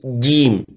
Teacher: الباء والجيم من حروف الشدة التي ينحبس فيها الصوت، ومن حروف الجهر التي ينحبس فيها النفس، يعني فيها شدة، ينحبس الصوت وينحبس النفس، حتى لا تشبه الباء الفاء ولا الجيم الشين، لأنه إذا لم يحبس النفس ستكون مثل الشين، الجي، يقول جي جيم بعضهم، وهذا صحيح. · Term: حرف شديد